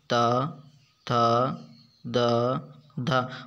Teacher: जैसे ट वर्ग के वर्ण ट ठ ड ढ ण अगला है चौथा दंत दंत दंत या व्यंजन जिन व्यंजनों को चार जीभ की नोक ऊपरी दांतों को स्पर्श करती है दंत व्यंजन कहलाते हैं।